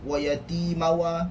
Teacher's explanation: Dia ada satu bunyi tu di antara tanwin dengan waw, yang mana bunyi itu tidak sempurna masuknya, berbanding dengan nun, mim, lam dan ra.